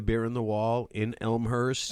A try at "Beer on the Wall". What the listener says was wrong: beer, Beer. Sounds like you're saying bear. Doesn't it sound like you're saying bear?